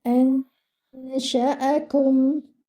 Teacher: You will hide your noon and the gunna over here should be light because the sheen is a light letter. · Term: ikhfa